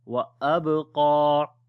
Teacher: this qaf we long due to standing fatha on it, and also we say heavy sound.